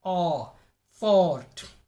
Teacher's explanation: The tongue receives long tension, long tightness. The lips are rounded and shaped like a fish mouth. · It has a backward shift, a backward movement. The body of the tongue is in the middle of the mouth. It is positioned midway between closed and open vowel sounds. The jaw drops little and the mouth is also open a little. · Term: aw sound